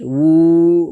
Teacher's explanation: उल्टा पेश को एक अलिफ के बराबर खींच करके अदा करेंगे